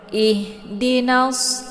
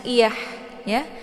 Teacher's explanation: ha besar ini dia posisinya sejajar dengan hamzah, yaitu halqi bawah ya, tenggorokan bawah. Agak sedikit gemang.